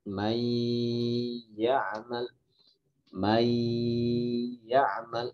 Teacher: Jadi sifat nun itu kan guna, sedangkan sifat ya itu tidak guna. Nun dimasukkan ke huruf ya, dia tidak hilang sifat gunahnya nun, jadi masih ada sisa. Jadi tidak mai, kalau mai ditutup hidung, mai itu gunahnya hilang, itu berarti tidak tepat. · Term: idgham naqis